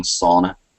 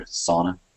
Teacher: if we use British English to use that word, we're going to give it a kind of a long sauna. And in North America, it's going to be just a quicker sauna kind of thing.